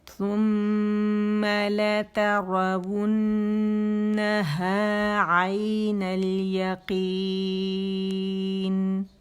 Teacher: عین آئی نہیں بولیں گے، اسے حمزہ نہیں بنائیں گے. عین آئی جیسے پڑھائی میں بولتی ہوں نا، عین الیقین.